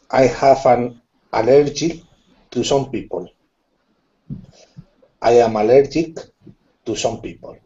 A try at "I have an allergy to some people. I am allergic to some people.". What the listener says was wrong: Good. Nice job. Really good reading. Good pronunciation.